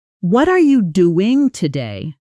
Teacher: you hear how are almost disappears? How the emphasis lands hard on doing and today?